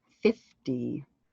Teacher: 5 0 actually has a d sound in the middle in north america